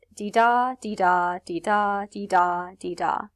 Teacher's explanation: a couple of syllables where the first is unstressed and the second is stressed so i've written this out phonetically here as dee da dee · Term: iambic pentameter